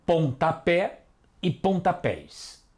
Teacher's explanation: E todas elas são oxítonas, ou seja, têm a última sílaba tônica